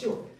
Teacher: 위 잇몸에서 나는 소리잖아 마찰되면서 위 잇몸이랑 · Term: 잇몸 소리